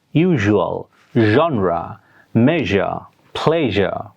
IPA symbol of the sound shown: ʒ